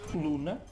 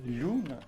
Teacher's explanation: as palavras que em latim começavam por L, o som L, em mirandês palatalizaram, ou seja, deram lhe.